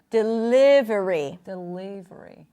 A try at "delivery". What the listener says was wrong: make the L is a little lighter yeah delivery right keep the tip of the tongue behind the teeth